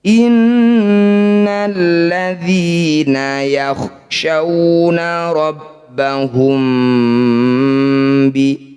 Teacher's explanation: mim sukun bertemu ba disebut bacaan ikhfa. Namanya ikhfa syafawi, bunyi mim dengungkan